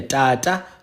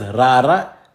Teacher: The only difference is that Tata is ejective. So it's like it shoots T. Whereas ra is a trill. It's like [snorts] that's how your tongue moves.